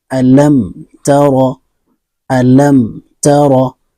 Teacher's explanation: میم ساکن کے بعد تا آ گیا ہے، تو یہاں پہ بغیر غنہ کے جلدی پڑھیں گے، اس کو اظہار شفوی کہتے ہیں۔